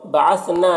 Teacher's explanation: ثم میم مشدد غنہ ہوگا۔ بعثنا، نا میں الف مدہ ہے، ایک الف کے برابر کھینچیں گے